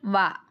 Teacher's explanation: పై దంతాలు క్రింది పెదవి దంతోష్టాలు